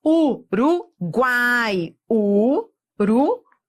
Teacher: Isso é um tritongo. Semivogal, vogal, semivogal.